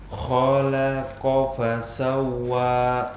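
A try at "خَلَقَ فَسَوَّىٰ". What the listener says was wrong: Ahsan, tapi jangan berlambat, nanti memanjang.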